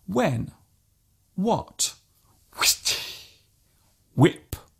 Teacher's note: there is actually no need to pronounce the h so strongly just let the sound leave your lips naturally